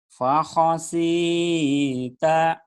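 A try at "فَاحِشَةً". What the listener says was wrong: bagus tapi shin-nya gede Mas. Shin-nya ada anginnya. Fakhasyita.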